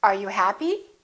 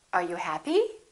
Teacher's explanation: That's a yes-no question because I can say yes or I can say no. With yes-no questions, the intonation goes up.